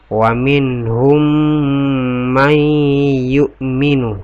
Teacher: man nun sukun ketemu dengan ya. Hukum bacaannya itu adalah idgham bigunnah. Jadi didengunkan di sini ya